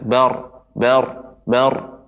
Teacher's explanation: Nah, dia seperti tertahan getaran itu, ya, dia lebih sedikit. Kemudian kita angkat suaranya bar, ya, naik ke atas. Artinya kita tebalkan naiknya suara bar, nah demikian. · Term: ra tafkhim